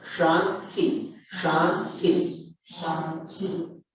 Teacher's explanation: This T is at, like we say in English, the tongue is at the back of the teeth.